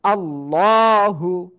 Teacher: এই আল্লাহ শব্দের লামের ডাইনে যদি জবর অথবা পেশ আসে তাহলে আল্লাহ শব্দের লাম হলো মোটা আওয়াজে পড়তে হবে, অর্থাৎ সিম্পল ল।